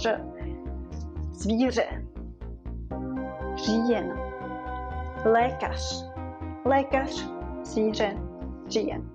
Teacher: the important thing is that you will hear this kind of explosion of the air in your mouth.